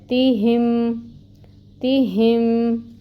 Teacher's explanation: تا باریکی سے ادا کریں گے، کسرہ ہے، زیر کی حرکت ہے، 1 کاؤنٹ پڑھا جائے گا۔ پھر ہا ہے، ہا جو ہے یہ اقصی الحلق سے آئے گا آواز اس کی، اور اس کے نیچے بھی کسرہ ہے، 1 کاؤنٹ ہی اس کو پڑھا جائے گا، اور پھر اس کو میم کے ساتھ ملائیں گے جو ساکن ہے، تیہم تیہم۔